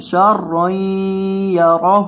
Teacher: لفظ وہی ہے، صرف یہاں شرًا خیرًا کی جگہ پر آ گیا ہے، اور یہاں آپ نے گننا کر کے پڑھنا ہے یا کے اوپر. شرًا یرہ، اور وقف کی حالت میں ہا کو ساکن کر دینا ہے وقفاً، شرًا یرہ.